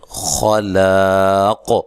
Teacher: لا پہ الف مدہ ہے اور وقف کی صورت میں مد کر سکتے ہیں. وقف کی صورت میں قاف پہ خوب قلقلہ کرنا ہے · خا کو موٹا ادا کریں. لا پہ الف مدہ ہے اور وقف کی صورت میں مد کر سکتے ہیں.